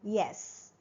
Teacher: The front of the tongue is raised close to the hard palate. Okay, and the soft palate is raised to allow the oral passage of air. · Okay, and the soft palate is raised to allow the oral passage of air. The sound is produced with the tongue near the palate but without friction. Okay, then the vocal cords are vibrating. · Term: semi-vowel, palatal